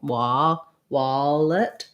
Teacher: i'm having some rounding on that lax vowel